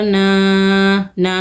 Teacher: ہونے کے ساتھ پڑھیں گے، ما لن، نون الف زبر نا، نا میں الف مدہ ہے، دو حرکت کھینچ کے پڑھیں گے